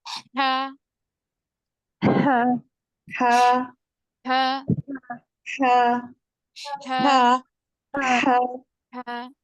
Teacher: क्या है इसका मखरज, वसतुल हलक, जबान का हलक का दरमियानी हिस्सा, जुबान का नहीं बल्कि हलक का दरमियानी हिस्सा, middle part of the throat